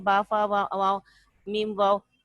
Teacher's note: دونوں ہونٹوں سے ادا ہوتے ہیں